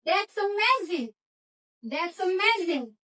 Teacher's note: Berarti intonasinya itu naik kemudian turun